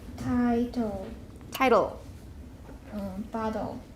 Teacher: liquids R and L, L and R, are syllabic when at the end of the word immediately after a consonant